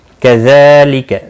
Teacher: ज़ाल के ऊपर खड़ी ज़बर है, एक अलिफ के बराबर खींच कर पढ़ेंगे। बाकी किसी भी हरकत वाले हरफ को खींचना नहीं।